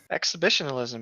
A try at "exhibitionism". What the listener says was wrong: Exhibitionalism? I think you added a few syllables there. Exhibitionism.